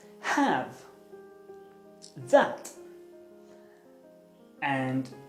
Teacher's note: It's a vowel sound, and its technical name is the low front unrounded vowel.